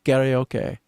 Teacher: I didn't breathe out my K.